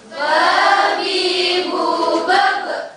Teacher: Bertemunya antara bibir atas dan bawah dengan sedikit menekan keluar darinya huruf ba. Sedikit menekan, jangan ba, tapi ba, sekedar ba.